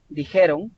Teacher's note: donde la mayor fuerza vocal está en la ge